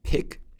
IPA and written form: pɪk (pick)